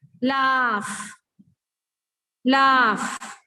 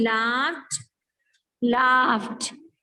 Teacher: जो verb का last sound f होता है, when ed is added to it, again this ed is pronounced as t